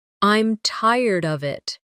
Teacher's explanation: with of sounding almost like uh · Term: weak forms